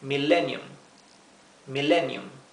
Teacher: Fíjense que la doble L, como les mencioné antes, cuando tenemos un una letra que una consonante que va doble, la vocal anterior va es especialmente corta y en este caso nos retardamos un poquito más en la pronunciación de la L.